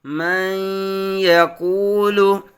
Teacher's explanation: نون ساکن کے بعد حروف یرملون میں سے یا آنے کی وجہ سے ادغام یرملون ہوگا، یعنی غنہ کریں گے